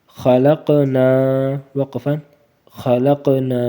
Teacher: خا زبر خا، لام قاف زبر لق، قاف ہے، قاف کے اوپر سکون ہے تو اس کو کیا کریں گے، قلقلہ کریں گے، اور قاف ایسے بھی موٹا ہوتا ہے اور خا بھی، ان دونوں کو موٹا کریں گے۔